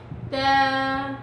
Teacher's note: تا، ما فيش همزة، ما فيش همزة عشان تقطعي الصوت بقوة، هتطلعي بأريحية